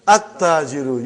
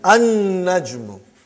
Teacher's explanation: You did not pronounce lam because noon is a shamsi, sun letter